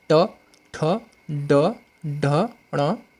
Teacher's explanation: मूर्धन्य बिना मूर्धा के इस्तेमाल नहीं किया जा सकता, जैसे ट, ठ, ड, यानी इसमें क्या होता है, जो जीभ होती है ना, ऐसे पलट जाती है और फिर एक साथ बाहर की तरफ धक्के के साथ निकलती है